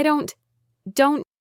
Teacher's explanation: It's more of a stopped sound. You put your tongue in the position to make the T sound, but you don't release the air.